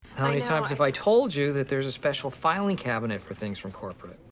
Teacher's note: he stresses the phrases told you and filing cabinet, with high pitch on the stressed syllables toll and fi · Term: word stress